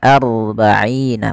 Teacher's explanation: Maka di sini ada bacaan namanya ro tafkhim. Ro yang kita baca dengan bacaan tebal. Tidak dibaca arba'ina tapi aru.